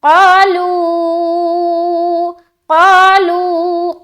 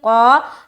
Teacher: قا الف مدہ کریں گے، قاف کو منہ بھر کر بولیں گے